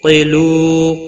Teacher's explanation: تا عین ساکن کو ہلانا نہیں۔ قیلو قاف حروف مستعلیہ میں سے پر پڑھا جائے گا۔ لو واو مدہ ہے، ایک الف کے برابر کھینچ کر پڑھیں گے۔